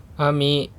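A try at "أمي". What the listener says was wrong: Ami apa nih? Ummi. Ya. Kalau ammi pakainya ain. Kalau ini kan pakainya hamzah.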